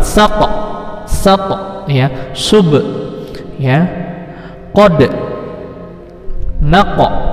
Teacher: Sama tadi baju di toko, huruf to yang berharakat sukun. Ini namanya qalqalah sugro. Ingat cara membacanya dipantulkan